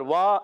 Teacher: واو الف زبر وا ایک الف کھینچنا ہے